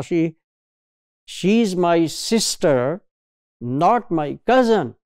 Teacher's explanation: so these syllables sis and first syllable of cousin they are more prominent they show change in Pitch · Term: prominence